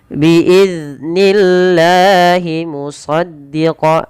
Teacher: Dan lafal Allah di sini dibaca dengan lam tarqiq. Bukan dibaca dengan nillah, tapi nillah.